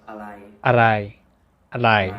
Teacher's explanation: R sound in Thai is not like an R in English. It's kind of between an R and an L. So if it's more convenient, you can just use an L instead of an R and say อะไร อะไร อะไร อะไร คนชื่ออะไร The intonation อะไร for อะไร I is a completely neutral tone.